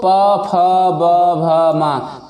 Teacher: क्या हमारे होंठ आपस में टकरा रहे हैं? हाँ, एक दूसरे को स्पर्श कर रहे हैं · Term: ओष्ठ